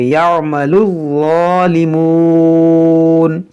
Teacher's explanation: देखिए अम्मा यहाँ पर गुन्ना करेंगे, यअमलु, देखिए यहाँ पर आइन है और इस लाम को ज़ा से मिलाएंगे और ज़ा को नरमी से अदा करेंगे।